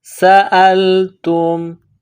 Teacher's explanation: سین میں سیٹی کی آواز پیدا کرنی ہے ، حمزہ کو لام کے ساتھ ملانا ہے، تا کو میم